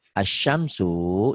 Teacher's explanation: di tulisannya ada lamnya, ada L-nya, dibacanya L-nya, lamnya nggak ada. Itu alif lam samsiah.